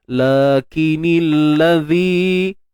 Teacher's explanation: huruf zal kita panjangkan dua harakat mat asli dan jangan lupa keluarkan hujung lidah kita sedikit sahaja. Lakinil ladzi natta, huruf nun terus masuk pada ta yang bersabdu tu.